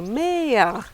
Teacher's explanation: Some of you even slipped in a little diphthong